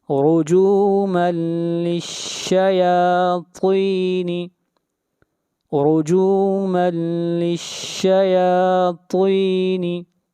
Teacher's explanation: تنوین کے بعد حروف یرملون میں سے لام ہے، ادغام بلا غنہ کریں گے ، رجوما للشیاطین، رجوما للشیاطین، طا کو موٹا پڑھیں گے، طا